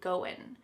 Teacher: That final G in the word going is gonna be cut off and we'll just say going.